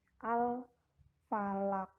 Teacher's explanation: Jadi yang dipantulkan adalah huruf qaf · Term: Qalqalah kubro